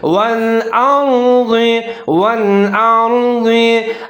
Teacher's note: ज़ाद के नीचे ज़ेर है, ज़ाद को मोटा पढ़ना है